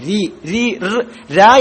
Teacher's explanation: സന്ദർഭങ്ങളിൽ തഫ്മും ചില സന്ദർഭങ്ങളിൽ തർക്കീക്കും ആകുന്ന തർക്കീക്കും ആകുന്ന ഹർഫാണ് റാ അപ്പൊ റാക്ക് കസർ വന്നാൽ എപ്പോഴും പിന്നെ തർക്കീഖ് ആക്കിയേ പറയും ലോലമാക്കി രി രി ര എന്ന ഉച്ചാരാണ് തർക്കീഖ് ലോലമാക്കി